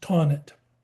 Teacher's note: Now, the tonnets were from France, but they settled in Germany and ended up in Vienna. So since there is no th sound in German, it's really pronounced tonnet